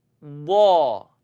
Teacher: my tongue is going to press up to the side wall wall you kind of hear the sound before it comes out